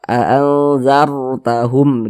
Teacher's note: Kalau kita mengaji Al-Qur'an berjumpa kita dengan huruf ra sukun, di belakang ra sukun itu ada harokat fathah, atau misalnya juga boleh juga harokat dhammah. Nah, maka huruf ra sukunnya itu dibaca tafkhim, dibaca tebal. Pangkal lisan kita itu naik terangkat ke atas ketika kita melafazkannya, ketika kita mengucapkannya.